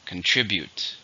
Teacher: How many syllables are in contribute? 3. Stress on the second.